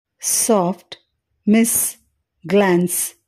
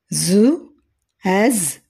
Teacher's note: Tongue ఎల్విలార్ ridge ప్రమేయంతో నోటిలోని ఇరుకైన మార్గం నుండి గాలి తప్పించుకున్నప్పుడు ఘర్షణ మరియు హిస్సింగ్ ధ్వనిని కలిగిస్తుంది. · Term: ఫ్రికేటివ్స్